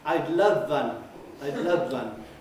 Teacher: they let the v at the end of love contaminate the w at the beginning of one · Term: sporadic assimilations